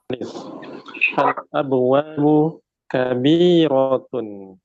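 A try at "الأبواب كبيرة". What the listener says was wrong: Iya, kabiratun. Ahsan.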